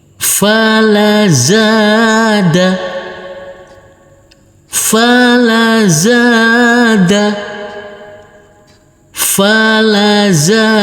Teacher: huruf fa kita baca pendek, huruf lam kita baca pendek, huruf zain kita baca panjang dengan panjang 2 harokat, dan huruf dal ini nanti kita baca pendek.